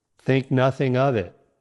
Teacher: Link the words think and nothing together so it flows as think nothing.